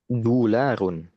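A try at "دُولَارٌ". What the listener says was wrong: Ini harusnya tanwin ya, tanwin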